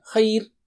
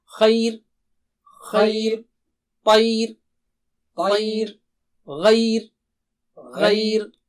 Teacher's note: را ساکنہ سے پہلے ساکنہ حرف ہو، اس سے پہلے زبر ہو تو ہم عام طور پر سیکھے تھے کہ را کو موٹا کریں گے، جیسے والعصر، لیکن لا ساکنہ سے پہلے یا نرم ہو تو را کو باریک کر دیں گے، مثلا خیر تو اب خا جو ہے موٹا ہے، موٹا اونچا ہے، خی تو ای کہنے میں زبان باریک ہو گئی تو را کو بھی باریک کر دیں